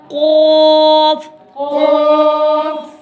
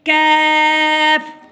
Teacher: یہ جو دو نقطوں والا قاف ہے اس کو موٹا پڑھیں گے اور یہ جو اگلا کاف ہے کش والا اس کو باریک پڑھیں گے